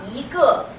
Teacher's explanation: it's yi ge, it's actually second tone